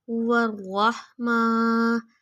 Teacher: میم کے اوپر بھی کھڑا زبر ہے، تھوڑا کھینچیں گے